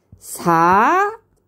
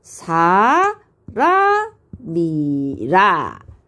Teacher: 사는 점이 2개 있으니까 낮았다가 높은 소리가 되겠죠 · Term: 상성